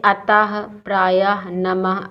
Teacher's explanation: इन शब्दों का उच्चारण करने पर अंत में हा निकल रहा है। तो ऐसे वर्ण विसर्ग कहलाते हैं।